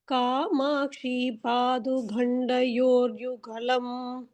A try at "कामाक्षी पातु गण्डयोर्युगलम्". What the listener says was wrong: பாது சொல்லக்கூடாது பாத்து